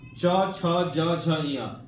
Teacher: इसको बोलने पर आपका जीभ जो है आपके तालू में सट जा रहा है